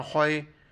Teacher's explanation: خا کو موٹا پڑھنا ہے بالکل، گلے کے آخر سے ادا کرنا ہے